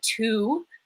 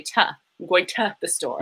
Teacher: what Canadians do and what Minnesotans do as well is we flatten all our vowels